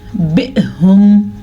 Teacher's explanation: اس حمزہ پہ جھٹکا ہو رہا ہے کیونکہ اس حمزہ پہ ساکن ہے